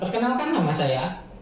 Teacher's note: pada kata nama ada penekanan yang membantu pendengar untuk fokus terhadap poin yang penting. Tekanan kata ini bisa bikin pesan kita lebih kuat dan jelas. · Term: penekanan kata